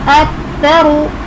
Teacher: रॉ पुर पढ़ा जाएगा, रॉ पर पेश है।